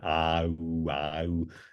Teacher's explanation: Yeah, so you can stretch the lips essentially from going into a super wide, from a super wide ah into an ooh and back and forth